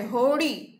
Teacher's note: હોડી લખીએ છીએ ડ, મૂર્ધન્ય ડ, પણ જ્યારે આપણે એનો ઉચ્ચાર કરીએ છીએ ત્યારે હોડી એ ડ થડકારા વાળો, થોડોક થડકારો, આપણી જીભ એ થડકારો અનુભવે છે